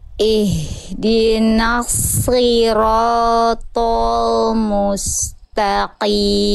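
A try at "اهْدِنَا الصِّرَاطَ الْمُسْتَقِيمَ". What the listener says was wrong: Yang ini udah bagus nih tebalnya. Tinggal di huruf lam jangan ikut tol. Lamnya tipis. Jadi ihdinas siratal jangan tapi ya.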